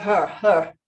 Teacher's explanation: Drop the R of her